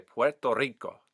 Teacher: Some accents I've heard have sort of a hard R throughout. In this case, I'm hearing a very lush rolled R.